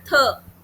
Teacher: Dental जिसमें आपके टंग की जो टिप है वो ऊपर के दांतों से जाके लगती है, जैसे थीटा, है ना, थ।